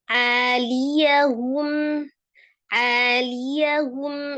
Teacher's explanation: Huruf ain itu dari tenggorokan bagian tengah, tidak terlalu ditekan gitu ya karena dia tawasud, jadi a gitu ya.